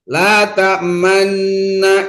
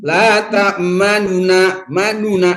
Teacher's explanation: kalau ismam hanya mengisyarat. La tamanna isyarat aja. Tapi kalau ikhtilas laununa manuna nunnya itu cepat.